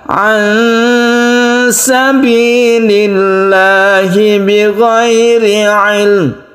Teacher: nun mati bertemu dengan sin, ini kita baca ikhfa hakiki, kita samarkan membacanya, didengungkan juga, artinya dipanjangkan